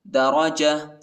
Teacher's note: वक़फ़ की सूरत में ता को हा पर तब्दील करेंगे